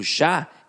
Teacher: o Já é a última sílaba e ficou mais forte. E eu quero que vocês entendam o seguinte, quando aparece somente uma sílaba, eu não tenho essa quantificação de dizer que ela é a última.